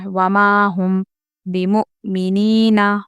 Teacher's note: مؤ میں جھٹکا ہوگا کیونکہ ہم نے پڑھا ہے کہ حمزہ ساکن اگر ہوگا تو حمزہ ساکنہ کے پڑھنے میں جھٹکا ہوتا ہے۔